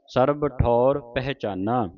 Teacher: ਠੌਰ ਕਨੌੜੇ ਦੇ ਨਾਲ ਉਚਾਰਨ ਕਰਨਾ ਇਹ ਧਿਆਨ ਰੱਖਣਾ ਕਿ ਠੌਰ ਨਹੀਂ ਕਹਿ ਦੇਣਾ ਠੌਰ ਮੂੰਹ ਖੋਲ ਕੇ ਉਚਾਰਨ ਹੋਵੇਗਾ